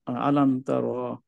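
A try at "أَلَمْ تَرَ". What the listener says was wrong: রতে একটু টান হয়ে গেছে ভাইয়া।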